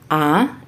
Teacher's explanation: the tongue is below the neutral position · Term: low open vowel